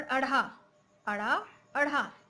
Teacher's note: उनके उच्चारण में जीभ पीछे की ओर जाकर झटके से सामने गिरती है। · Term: उच्छिप्त व्यंजन